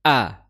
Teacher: Hamzah dikeluarkan dari pangkal tenggorokan ya, pangkal tenggorokan atau di kedua pita suara ya,